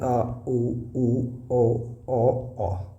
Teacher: पश्च स्वर मतलब जो पिछले हिस्से से, जीभ के जो पश्च भाग से जो बोले जाते हैं, तो जिसमें आप देखेंगे आ, उ, ओ, तो ये जो है क्या पश्च स्वर हैं, ठीक है।